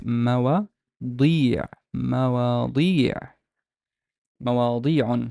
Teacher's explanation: This dal, this d has a long vowel kasra because of the ya following it. So it's mawa, di, مواضيع.